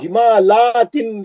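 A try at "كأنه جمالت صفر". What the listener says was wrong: تو نہیں ہوگا نا, لام پہ کھڑا زبر نہیں ہے نا. پھر آپ جمالاتن کہاں سے پڑھ رہے تھے؟ لام پہ نہیں ہے نا کھڑا زبر. جمالتن ہے نا, جمالتن صفر.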